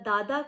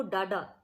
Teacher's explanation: इसी तरह अगर दादा को वो डाडा, द को ड उच्चारित करेंगे क्योंकि वो द नहीं बोल पाएंगे